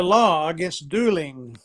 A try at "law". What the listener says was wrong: Yeah, now pay attention to the pronunciation of the word law again. It's a long word. It's not a short word. So you don't say law. You have to say law, right?